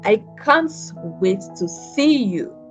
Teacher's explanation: the rhythm falls on this stress, can't and see